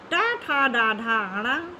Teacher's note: फिर टा, ठा, डा, ढा, अणा, इसका उच्चारण स्थान मूर्धा होता है।